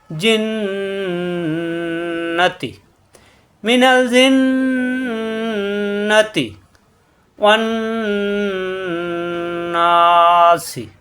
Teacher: মুখ খোলা রেখে গুণা হবে, নাকের ভিতরে গুনগুন করতে হবে, একটু বেশি সময় ধরে রেখে, অজীব গুণা।